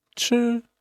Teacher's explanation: 米饭你吃 so this one is first tone. 吃 was very high, very steady, and don't change